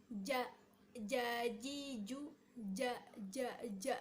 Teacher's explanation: bertemunya tengah-tengah lidah dengan langit-langit atas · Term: huruf ja